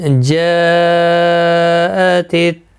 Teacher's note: ہم نے بتایا تھا حروف مدہ کے بعد جب حمزہ ایک ہی کلمے کے میں حمزہ ایک ہی کلمے کے اندر آتا ہے تو مد متصل لگتی ہے. یہ بڑی مد 4 الف کی مقدار کے برابر کھینچ کر پڑھا جاتا ہے